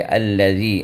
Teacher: نوک ہم باہر لائیں گے زال کو ادا کرنے کے لیے